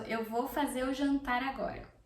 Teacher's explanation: Jantar is dinner, the noun, so I am pronouncing the R for this, but I'm not pronouncing the R for the verb, okay? So, eu vou fazer o jantar agora.